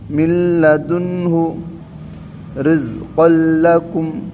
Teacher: ఈ విధంగా తొందరగా చదవాలి, గున్నా చేయకుండా, బగైర్ గున్నాకి అంటే గున్నా చేయకుండా చదవమని చెప్పడం జరుగుతుంది.